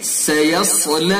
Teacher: سیصلی، سین کو باریک پڑھیں گے، اس کے بعد صاد کو پر کریں گے